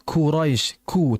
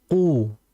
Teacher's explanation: Karena huruf qaf dia memiliki sifat yang menetap atau sifat dzatiyah, yaitu dengan sifat jahar.